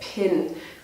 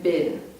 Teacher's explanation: Aspirated means when the breath comes out, like p, you can hear the air coming out. For Indian speakers of English, this might sound a bit like b, because maybe the air is not coming out.